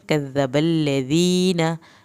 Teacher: दाल के साथ या साकिन को खींचें, नून की ज़बर को लंबा हरगिज़ नहीं करना